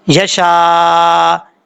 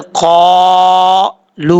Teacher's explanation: قاف حروف مستعلیہ میں سے پر پڑھا جائے گا تو الف سے پہلے قاف جب پر پڑھا جائے گا تو الف کو بھی پر پڑھیں گے، چاہے جتنی مرضی لانگ کریں.